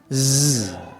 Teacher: mahraj za itu adalah ya ujung lidah bertemu dengan gigi seri tapi agak ke bawahnya